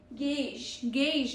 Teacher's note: AU sounds like AY, not AW. This is AU.